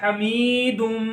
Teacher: تو یہاں پر بھی تنوین کے بعد میم آ گیا یہ, تو یہاں پر بھی ادغام کا قاعدہ لگ رہا ہے, اس کو بھی ملائیں گے. حمیدن ماں سے بن جائے گا حمیدم, تو میم میں بھی گنہ کر کے پڑھتے ہیں تو کیا بن جائے گا حمیدم.